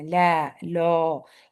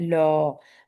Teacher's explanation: گے لا، اس کو ہم نے لو نہیں کرنا، لا، لو، یہ جو ذرا سا منہ کو راؤنڈ کر دیتے ہیں، زبان کو ڈھیلا چھوڑ دیتے ہیں، اس میں آواز میں موٹا پن آ جاتا ہے